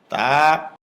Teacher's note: জিহ্বার আগা উপরের দাঁতের গোড়ায় ভিতর দিয়ে লাগবে, মুখ খুলে দিবে, এক আলিফ পরিমাণ লম্বা হবে।